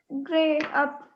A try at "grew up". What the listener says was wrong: ग्रे अप है, EW, क्या कौन सा साउंड निकलेगा? Grew up, आगे।